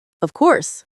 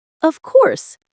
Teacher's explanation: when they are certain their voice goes down strongly. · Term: intonation